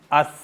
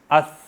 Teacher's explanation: अब आपने जब अस किया तो आपको मालूम हुआ कि आपकी ज़बान बाहर निकल कर जो आपके अगले दो दांत हैं उसकी टिप पर टच हो रही